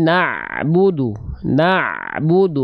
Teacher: Ain sukun Ain punya sifat namanya tawasud dia tidak boleh terhenti